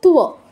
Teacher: ততে just touch, আর ও এর পূর্ণ উচ্চারণ